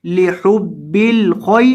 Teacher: और खौ को मोटा करेंगे, और इसके बाद ये जो या है ये या मद्दा का नहीं है, इसलिए यहाँ इसको लंबा नहीं करना।